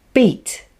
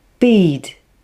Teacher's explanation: with less force so the e vowel sound is slightly longer the difference in the vowel sound length between the two is only slight